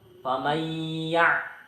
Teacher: Pada kata faman ya' terdapat hukum idgham bi hunnah karena huruf nun sukun bertemu dengan huruf ya bertasjid, dibaca masuk dengan dengung dan ditahan selama 3 harokat